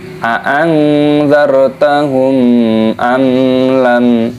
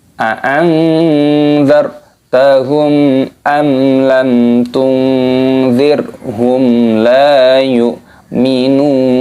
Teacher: Nah, ini adalah idhar syafawi, tidak boleh didengungkan, tidak boleh a'anzartahum amlam, seperti itu, harus dibaca idhar syafawi. Ini juga mim sukun bertemu dengan lam, mim sukun bertemu dengan ta, sama-sama idhar syafawi, tidak boleh dibaca berdengung, harus dibaca jelas.